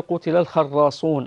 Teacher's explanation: الراء مشددة، انتبهي، لا نقول الخراصون، يعني فيها تكرير في الراء، تقرأ مشددة لكن غير مكررة